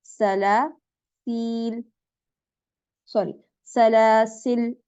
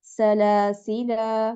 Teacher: यानी इस पर अगर आपने वक्फ करना है तो आप क्या करेंगे, आप हज़फ़ुल अलिफ यानी अलिफ को हज़फ कर दें, ड्रॉप कर दें